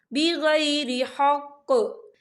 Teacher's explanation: वफ़ की सूरत में कौफ जो है साकिन हो जाएगा और हम यहाँ कलकला करेंगे